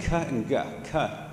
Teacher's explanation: On the other hand, k and g, k, they're the same sound other than your vocal cords being involved. So k happens at the back of your mouth, at your soft palate. G, same place, but your vocal cords are moving in that case and vibrating.